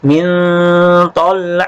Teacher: nun ini dibaca samar-samar karena merupakan aturan ikhfa yang sesuai dengan huruf tha, "min tholha." Suaranya tidak jelas dan terdengar sengau. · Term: hukum ikhfa